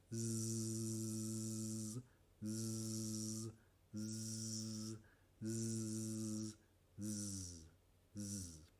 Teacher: Ahora el sonido Z, que no usan en español, o casi no lo usan, pero es igual que la S, solo moviendo las cuerdas vocales